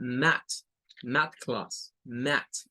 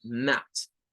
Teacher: con el AE y el TH sin vibración al final